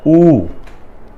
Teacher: इसमें होंठ थोड़ा आगे की ओर आया